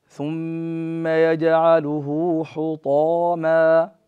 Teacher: لا بد نخصص هذا الطاء بالإطباق والتفخيم